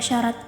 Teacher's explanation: S pada e contoh kata syarat ini masuk eh ke dalam lamino palatal yakni pertemuan antara daun lidah dan langit-langit keras